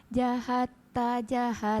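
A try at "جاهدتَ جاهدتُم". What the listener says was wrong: Panjang. Jahatta jahatum. Ulangi.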